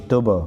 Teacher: با ساکن کو قلقلہ کریں گے